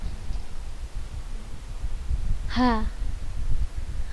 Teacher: Huruf yang di al-halqu, tenggorokan bagian bawah, kita tambahkan hamzah pada huruf sebelum ha dan kita sukunkan huruf ha tersebut. Nah, maka kita akan merasakan huruf ha keluar dari tenggorokan bagian bawah.